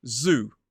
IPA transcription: zuː